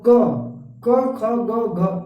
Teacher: तो ये कहाँ से निकलता है? कंठ से, मतलब यहाँ गले से निकलता है। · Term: कंठव्य